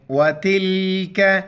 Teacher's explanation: چھوٹی کاف ہے باریک کریں گے تا کو لام ساتھ ملیں گے وتلك حدود اللہ لفظ اللہ